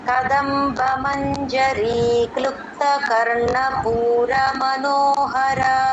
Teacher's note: క్లుప్తా దగ్గర దీర్ఘం ఇవ్వకూడదు వెంటనే అందుకోవాలండి